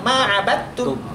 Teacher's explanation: Jadi langsung ma'abattum. Dalnya anggap aja nggak ada.